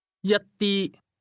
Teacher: This word is pronounced with the same high, level tone